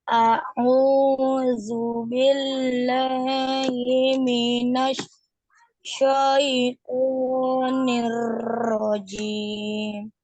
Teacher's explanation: Huruf ro ya, ditekan di situ huruf ro. Syaitonir rajim karena ada tasdid ya. Ditekan ro, tapi nggak boleh juga terlalu syaitonir, itu nggak boleh juga karena nih kita ulang lagi di huruf ro.